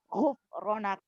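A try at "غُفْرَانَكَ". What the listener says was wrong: Kenapa jadi ada UU? Kenapa jadi UU? Gufranak.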